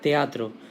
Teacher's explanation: está la E y la A juntas, ambas son vocales abiertas y ambas se separan, formando el hiato